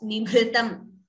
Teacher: Bhr is Mahaprana. And we should not chant it as nibhritam. There is no dvitvam there. It is just nibhritam.